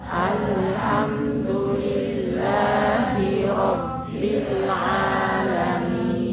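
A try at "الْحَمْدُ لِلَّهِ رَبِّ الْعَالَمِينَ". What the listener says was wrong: Ya, Masya Allah.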